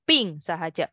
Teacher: B sebut P tanpa angin